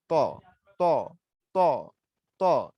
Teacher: এই ত উচ্চারণের সময় একটু জিহ্বাটা গোল হয়ে যাবে এরকম, ত ত ত ত, জিহ্বাটা একটু গোল হয়ে যাবে ত ত, আর তার সময় সমান থাকবে জিহ্বাটা।